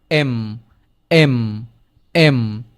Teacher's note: এম এর ক্ষেত্রে গলার ভিতর থেকে উচ্চারিত হয়